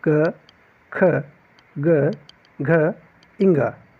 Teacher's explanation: ये जो है क वर्ग, इसका उच्चारण आपके कंठ से होता है, इसलिए इसे कंठ व्यंजन कहा जाता है।